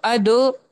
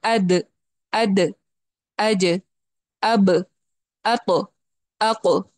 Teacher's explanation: तो अदो नहीं बोलना है, अद, ऐड नहीं करना है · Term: कलकला